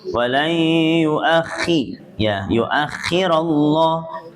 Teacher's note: Ayat yang terakhir, walai yuakhirallah, walainya ini adalah idgham biguna yuakhirallah, khoknya ditarik tafkhim dulu, ketika masuk ke harokatnya tarkik. Walai yuakhi ya, yuakhirallah, kemudian lafdzul jangan ditafkhimkan ya, karena sebelumnya fathah.